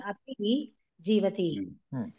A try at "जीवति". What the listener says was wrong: दीर्घं न वदतु अपि जीवति ह्रस्वयः अस्ति किल इति दीर्घं न वदन्तु